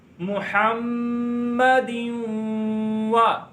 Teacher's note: میم پہ میم شدت کا گنہ ہوگا اور دال پر ادغام یرملون ہوگا, گنہ کر کے پڑھیں گے محمد وا.